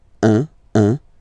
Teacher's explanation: when you combine this U and N, you get the nasal sound un